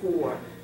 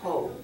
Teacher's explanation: we're not really using the r sound American R